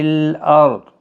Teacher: ضاد حروف مستعلیہ کا حرف ہے، ساکن ہوگا تب بھی پور پڑھا جائے گا